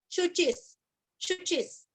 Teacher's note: शुचि का शु और ची दोनों भी रस्व है, ची के ऊपर आघात और आधा स